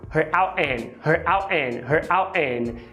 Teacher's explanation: Você junta her out. Fazendo a parada glotal no T do out